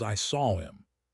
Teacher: In unstressed pronouns like him, her, and his, we often delete the H if the word is in the middle of a sentence. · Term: H deletion